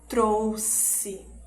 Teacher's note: E ele vai ter o som de S duplo, né? Que é um pouquinho mais longo